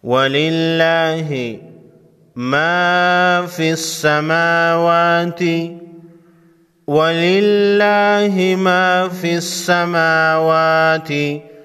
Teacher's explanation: للہ کے اوپر کھڑا زبر ہے، ایک الف کے مقدار یعنی 1 سیکنڈ لمبا کریں گے